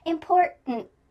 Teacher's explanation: I want you to use this word important because in the middle we have that glottal T, import, and then at the end we have a stop T, important. There's no T that we actually speak at the end